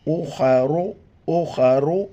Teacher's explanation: خا کو موٹا کر کے پڑھنا ہے